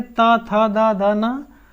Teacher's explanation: दंत क्यों बोला जाता है, क्योंकि इनको बोलने पे हमारा जो जब ये वर्ण बोलेंगे ता, था, दा, धा, ना, तो इनको बोलने पे हमारे जो है यानी दांतों पे जो है स्पर्श होगा। जीभ क्या करेगी, दांतों पे स्पर्श करेगी। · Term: दंत व्यंजन